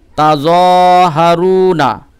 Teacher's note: ওকে, তাযহারুনা, এই যে জয়ে একালিফ টান দিবেন আর রুয়ে একালিফ টান দিবেন।